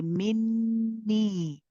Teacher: Okay, so you hold the noon mushaddad, you let the gunna, you prolong it, and then you say the knee, but the knee has a ya with it. There is a mad badal here, so we have to stretch the knee for 2 counts.